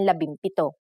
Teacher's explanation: If a P follows the NG connector, the NG becomes an M